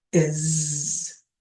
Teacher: in the word 'is' the s is making a z sound